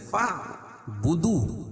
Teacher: جب اس کو فا کو عین میں ملائیں گے تو یہ الف حذف ہو جائے گی